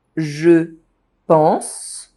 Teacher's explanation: One of the most common is when subject pronoun je is pronounced sh. Je pense. If the I is dropped, it sounds like je pense. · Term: assimilation